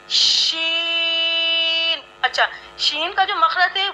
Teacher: शीन। ये होगा कि ज़बान के दरमियान और ऊपर के तालु के दरमियान से शीन अदा होता है